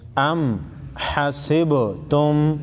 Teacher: سین با زیر سے با ساکن پر قلقلہ کریں گے